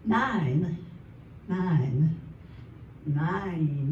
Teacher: Even in my normal voice, I I make it longer where it sounds like it's two syllables. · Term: draw